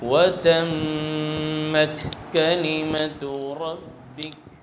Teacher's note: جب ہم کاف اور تا کو ادا کریں گے تو آواز بند ہو جائے گی، اور آواز کے بند ہونے کے بعد ہلکا سا سانس بھی جاری رہے گا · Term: ہمس